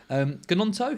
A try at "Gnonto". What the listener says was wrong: And it's Nonto. You don't pronounce the G. Do you know the easiest way of remembering this as is you wouldn't say Gnocchi, you'd say Gnocchi.